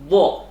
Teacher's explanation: Yang pertama ada dari sisi atau tepi lidah, yaitu pangkal tepi lidah, yaitu huruf dho. Nah, itu bunyinya keluar dari tepi lidah, boleh tepi lidah kanan atau kiri, dho. Nah, hingga sambung dengan makhraj huruf lam serta menepati geraham.